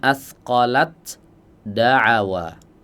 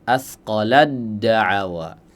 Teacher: Jadi dileburkan ya ta sukun bertemu dengan dal berharakat ini idgham mutajanisain.